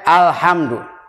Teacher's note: Jadi lamnya dibaca dengan tegas, dikuncikan, lidahnya dirapatkan. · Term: idhar qamariyah